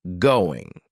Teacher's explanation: That final G in the word going is going to be cut off